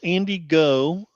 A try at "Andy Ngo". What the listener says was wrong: The G is silent. The G is silent.